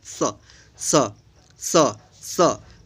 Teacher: और ये जो है तीसरा स होता है दंत स, तो जीभ जो है दांत के पास में आकर इसका उच्चारण होता है